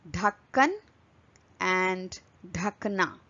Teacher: it is an aspirated version of the previous consonant which is duh